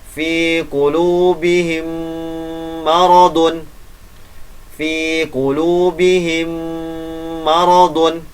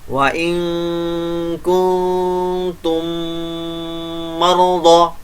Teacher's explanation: Jadi didengungkan dengan sempurna dengungnya, karena ada mim sukun bertemu dengan huruf mim. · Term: idgham mutamasilain